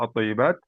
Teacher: Contoh, lam syamsiyah mudghama, lam syamsiyah dimasuk dalam huruf yang selanjutnya. Contoh at-thayyibat, لام شمسية مدغمة في الطاء المفتوحة الطاء.